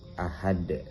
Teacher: Sebenarnya ahadun di sini tidak qalqalah, tapi karena kita wakafkan di akhir ayat maka menjadi qalqalah kubra. Cara membacanya itu dipantulkan keras